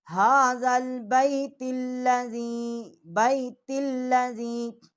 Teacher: تا جو ہے یہ نرم ہو جائے گی، اور لام جو ہے وہ بھی ہم اس کو موٹا نہیں کریں گے،